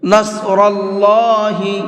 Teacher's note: صاد کو بھی مبھر کے پڑھیں گے اور اللہ کے لام کو بھی مبھر کے پڑھیں گے، اس لیے کہ یہاں پر اللہ کے لام سے پہلے زبر ہے